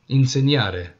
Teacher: It's a nasalization, not a strong in.